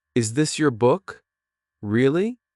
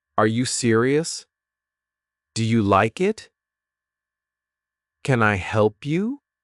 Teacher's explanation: rising intonation when your voice goes up at the end.